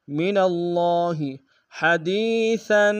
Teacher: ہا کی گہرائی سے ادا کریں گے، دال کو یا کے سامنے گے، مدہ ایک انداز میں کھینچیں گے، سا کے اوپر تنوین غنہ کریں گے۔